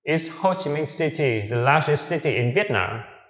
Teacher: Ngữ điệu đi lên ở chữ Nam.